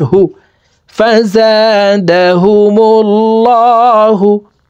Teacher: হা পেশহু ফাজাদাহু মিম লাম পেশ মূল লাম খারা জবর ল আল্লাহ শব্দের আগের হরফে পেশ আছে এই কারণে লামকে ল বলে অর্থাৎ মোটা করে পড়বো